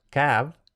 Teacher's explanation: la apócope, la pérdida de la O final.